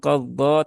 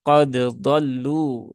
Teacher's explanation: Ya idhar sifatnya ditunaikan masing-masing ya. Berarti kolkolahnya dal dimunculkan dulu ya. Syiddahnya munculkan dulu ya. Setelah sifat dal tertunaikan semua baru ke huruf dod ya. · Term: izhar